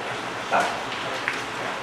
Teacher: 这是要舌头放在牙龈上一点的